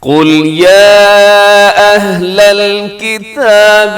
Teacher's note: قل میں قوف موٹا رکھیے گا اور یا اہلا میں چھوٹی مد ہے کیونکہ یا الگ ہے، اہلا یہ الگ لفظ ہے